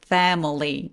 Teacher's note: 발음기호에는 저 I 부분에서 슈아라는 발음기호가 써있어요. 약간 뭉개서 내는 소리들이죠. Family 이렇게요.